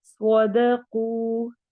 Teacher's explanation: صاد موٹے حروف میں سے ہے، قوف موٹے حروف میں سے ہے، اور واو مدہ ہو رہی ہے۔